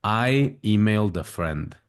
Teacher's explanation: Se escucha perfectamente cómo se enlaza el sonido consonante de la D con la A de a friend